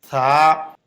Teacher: জিহ্বার আগা উপরের দাঁতের আগায় লাগবে, জিহ্বা এবং দাঁতের ফাঁকে বাতাস বের হবে, এক আলিফ পরিমাণ লম্বা হবে, পাতলা আওয়াজ হবে।